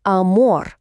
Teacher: Наголос падає на останній склад